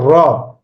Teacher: র যখন উচ্চারণ করতেছি জিহ্বার আগাটা এভাবে কেঁপে উঠতেছে, কম্পন লাভ করতেছে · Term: কম্পনজাত ধ্বনি